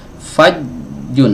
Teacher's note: ini suaranya tertahan ketika tengah lidah ini menempel ke langit-langit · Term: syiddah